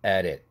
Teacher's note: t가 링킹 되면서 플랩 돼야 되겠죠